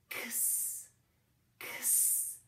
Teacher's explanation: The name of the letter is X, and it represents two sounds, the stop sound K and that hissy sound S